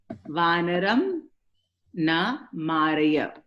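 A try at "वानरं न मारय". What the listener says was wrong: When you read, you have to be careful with the last vowel. The last vowel you have to read completely. Hindi influence.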